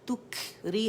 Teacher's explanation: तुखरी कैफ जो है ना इसमें हम्स है, इसमें कलकला तुख करके नहीं करेंगे बल्कि इसमें शिद्दा है। शिद्दा के बाद इसको ख़त्म करने के लिए हम्स किया जाए, तुखरी हवा फील होगी